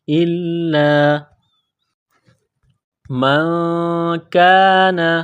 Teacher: لام کے اوپر تشدید ہے تو لام کو دبانا ہے